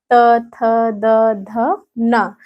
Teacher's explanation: इनको बोलने पर दंत का स्पर्श हो रहा है ना यानी दांत का स्पर्श हो रहा है ये त थ द ध न बोलने पे दांत का स्पर्श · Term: दंत स्पर्शी व्यंजन